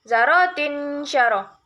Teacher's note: ikhfa hakiki karena ada hasratain bertemu dengan huruf sya, cara membacanya samar-samar membentuk huruf sya